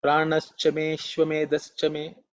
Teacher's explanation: The eye is usually silent when you chant because of Sandhi, but when it's split, it is Ashwa, because it will go Pranaschame, Shwamedhaschame.